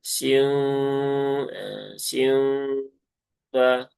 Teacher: Makanya biar tetap terjadi gunah, dan memang di sini juga idghamnya bukan idgham yang sempurna peleburannya, maka pastikan masih ada suara nun yang tertunaikan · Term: idghamnya napis